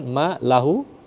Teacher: Ma lahu maanya panjang Karena ada Alif